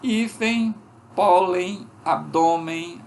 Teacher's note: Foneticamente, nós temos um ditongo aqui, que seria o E nasal, seguido da semivogal I, tanto ditongo nasal decrescente.